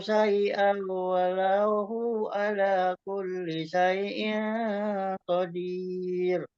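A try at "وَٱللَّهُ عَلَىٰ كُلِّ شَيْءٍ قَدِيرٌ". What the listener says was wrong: Kenapa masih disambung, Pak? Wallahnya malah, kata Allahnya tadi malah hilang, kata Allahnya 2 harokatnya.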